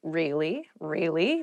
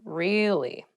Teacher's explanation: you can use it to show you were interested in a conversation with upward intonation really really tell me more or to show that you're not so interested in the conversation with downward intonation